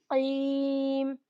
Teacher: काफ जो है उसकी आवाज हलक से आती है, बिल्कुल हलक से निकलता है, और या साकिन है तो इसको हम 2 काउंट्स स्ट्रेच करके पढ़ेंगे, क्योंकि यहाँ पर या मद्दा का कायदा हो रहा है, तो यहाँ पर या मद्दा का कायदा अप्लाई करेंगे।